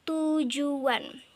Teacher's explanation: bunyi sertaan yang dihasilkan dengan cara kedua bibir dibulatkan ketika bunyi utama itu diucapkan, sehingga terdengar bunyi sertaan W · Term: labialisasi